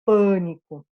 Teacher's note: É minha sílaba mais forte, é um fechado, não é A bem aberto, né? É bem nasalizado, porque na sequência eu tenho esse N, então ele é pânico.